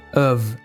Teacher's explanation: essa palavra não tem a pronúncia of mas sim of chega a ser um v mesmo